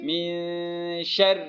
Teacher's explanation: را باریک ہوگی کیونکہ اس کے نیچے زیر ہے